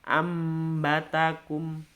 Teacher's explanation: Ya, jadi ketika huruf nun mati atau tanwin ketika bertemu dengan huruf ba ya, maka membacanya bukan anba atau angba, tetapi huruf mimnya ditonjolkan ambatakum, dimasukkan mim di situ. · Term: iqlab